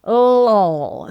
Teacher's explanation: The L at the beginning is what we call a light L and the L at the end is called a dark L. So LOL. So you can feel it's a tongue tip kind of action for the first L and a sort of back of tongue kind of action for the second L.